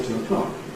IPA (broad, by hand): ˈtʊəˈklɒk